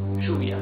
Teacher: In some countries in Latin America, it's pronounced sh.